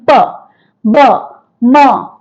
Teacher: Bilabial. You make use of two lips while pronouncing p, b, m. These are bilabial sounds.